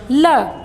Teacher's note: ल के उच्चारण में हवा जीभ के दोनों बगलों से बाहर निकल जाती है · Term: पार्श्विक